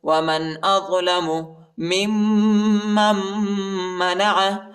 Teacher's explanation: میم کو دوسرے میم کے ساتھ ملائیں گے اور دوسرے میم کو تیسرے میم کے ساتھ ملائیں گے